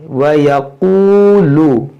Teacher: ये वाव ये काफ और वाव खींचेंगे, लाम को नहीं खींचेंगे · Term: वाव मद्दा